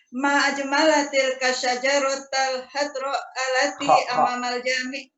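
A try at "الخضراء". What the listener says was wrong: Bukan hadro, khadro. Ma ajmalatil kasyajaratal khadra allati amamal jami'ati.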